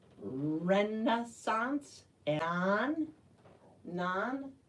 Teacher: We pronounce the CH like it's an SH because it's a French word.